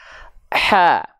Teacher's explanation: Karakternya berbisik, seperti orang berbisik, ya, atau seperti kepedesan. Makanya banyak yang bilang ha kecil ini dengan ha pedas, ya. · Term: hams